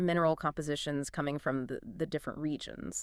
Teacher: the way the emphasis landed clearly on colors, mineral compositions, and regions really did help clarify the meaning and the flow of the sentences